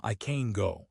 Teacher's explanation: The secret is again in the vowel reduction. Positive can, we reduce it to schwa, I can go. Very weak, very fast.